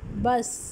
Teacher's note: तो हम ये कह सकते हैं कि ब साउंड इन बस is bilabial, stop and voiced consonant